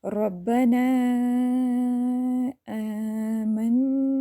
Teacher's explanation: نون مشدد کو اچھے سے ٹائم دینا ہے، ناک میں آواز لے کے جانی ہے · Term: غنہ